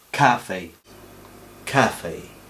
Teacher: En español decimos café, una K normal, y en inglés es cafe. Después de la K soltamos un poco de aire.